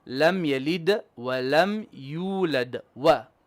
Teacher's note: Wa, not va. No V. There's no V in Arabic actually.